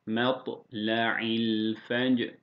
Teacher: Burada cime de tıya da vurgu yapıyoruz kalkale